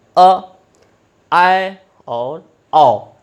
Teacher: वे स्वर जिनके उच्चारण में मुख आधे से ज़्यादा खुलता है, उन्हें हम अर्ध विवृत स्वर कहते हैं।